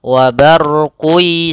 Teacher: Caranya adalah membacanya memasukkan tanwinnya ke huruf ya. Wa barqi sambil ditahan. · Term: idgham bi gunnah